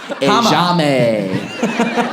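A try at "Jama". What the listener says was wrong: The J is silent. It'd be Hama.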